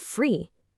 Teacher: the long stretched out e sound at the beginning of eat or the end of free